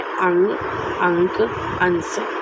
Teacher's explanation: अनुस्वार के उच्चारण में नाक से अधिक सांस निकलती है और मुख से कम। अनुस्वार माने जहाँ हम जो उच्चारण कर रहे हैं उस समय हमारी नाक से अधिक सांस निकलती है और मुख से कम निकलती है।